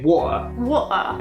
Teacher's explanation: about Cockney accents, they often drop the T. · If they're very posh, they would drop the R.